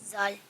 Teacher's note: زبان کی نوک اور اوپر والے دانتوں کے اندرونی کنارے